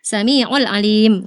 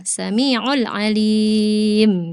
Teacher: Karena di sini kalau arid sukun kita di sini pakainya empat harakat ya, Kak. Jadi kalau dari awal kita sudah pakai empat harakat, maka kita harus istiqamah dari awal sampai akhir empat harakat konsisten.